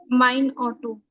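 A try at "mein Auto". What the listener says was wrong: ऑटो नहीं, आउटो। अब मेरी कार हो गई माइन आउटो।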